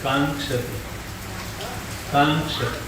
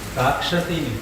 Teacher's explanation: તો ઉચ્ચારણમાં અનુસ્વાર બોલાવવો જોઈએ